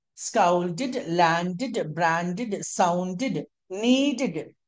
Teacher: whenever you find DED at the end of any English, that DED must be pronounced like DID.